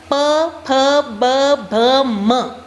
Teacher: म में होठ जुड़ रहे हैं